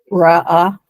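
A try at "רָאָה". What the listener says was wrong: Absolutely.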